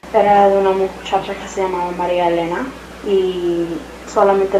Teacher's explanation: Tenemos la retención de la S, debilitamiento de la D intervocálica, la entonación que sube al final.